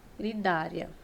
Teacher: o i é uma semivogal então do menor para o maior né do mais fraco para o mais forte eu tenho um ditongo crescente · logo aqui a minha sílaba mais forte a penúltima sílaba mais forte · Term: paroxítonas